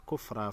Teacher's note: کفرن کو وقف کی صورت میں کفرا پڑھیں گے